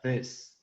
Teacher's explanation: Es ahí, es la I cortita, y la S común, S seca, this.